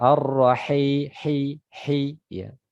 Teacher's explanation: Ini ketika ditutup hidung tidak berubah suara. Ar-Rahim, hi, ya. Karena dia makhrajnya dari tenggorokan bagian tengah, ya.